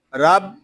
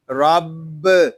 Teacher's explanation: با مشدد ہے، اس کو جماؤ کے ساتھ ادا کریں گے، اس کو رب اس طرح نہیں پڑھیں گے، اس کو پڑھیں گے رب۔